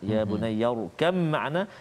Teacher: Ba hilang terus ba tu terus kepada mim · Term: idgham